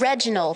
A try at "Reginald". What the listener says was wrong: You have to roll your R's. It's Reginald.